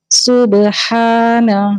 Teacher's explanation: ہا وسط حلق سے اور 2 حرکت پڑھا جائے گا کیونکہ الف مدہ ہے ساتھ میں. نون کے اوپر زبر ہے، اس کو صرف 1 کاؤنٹ پڑھیں گے، اس کو لمبا نہیں کریں گے ہا کے ساتھ.